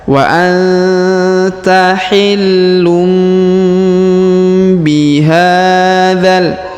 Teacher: Kemudian huruf tanwin unnya berwarna biru muda, artinya ada tanda tajwid, yaitu pertemuan antara tanwin un dengan mim atau dengan ba, ya. Maka tanwinnya berubah menjadi huruf mim, dibaca wa anta hillum bihadzal.